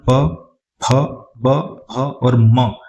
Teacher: प वर्ग का जो उच्चारण होता है वो ओष्ठ से होता है।